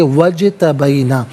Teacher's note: وَمِمَّن ہدینا وَاجْتَبَیْنَا، واو پر زبر ہے، اسے اجتبینا کی جیم ساکن کے ساتھ ملائیں گے، درمیان میں سے الف یعنی حمزہ کو حذف کیا جائے گا۔ جیم حرف قلقلہ ہے تو آواز لوٹتی ہوئی محسوس ہونی چاہیے